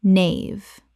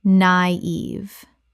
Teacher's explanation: Two syllables with a dieresis over the I, meaning both vowels are pronounced separately.